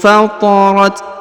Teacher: huruf ta yang di ujung, karena dia berharokat sukun maka kita berikan hembusan tipis ya.